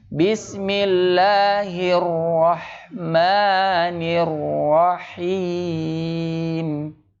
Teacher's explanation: Jangan panjang-panjang takrirnya. Cukup dua ya. Kalau satu kurang. Bismillahirrah.